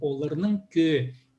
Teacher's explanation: В хакасском языке есть правило, иногда вот некоторые гласные, они съедаются. Кёг должно быть, да? Но г выпадает и получается кё